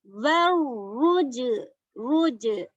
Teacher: را کو ہیوی کرنا ہے کیونکہ جیم پہ ضمہ ہے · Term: را ہیوی